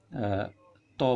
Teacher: जिह्वा दांत का स्पर्श करती है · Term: स्पर्श वर्ण